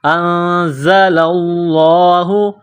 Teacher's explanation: بِمَا أَنزَلَ اللَّهُ، نون ساکن کے بعد زا ہے، حروف اخفا ہے تو نون ساکن پر غنہ کریں گے. انزل اللہ، زا میں سیٹی کی آواز پیدا کرنا ہے